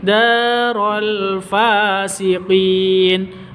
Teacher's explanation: Fa panjang dua ketukan, ada alif diawali dengan fa panjang dua ketukan, ada tanda berdiri di atasnya ya.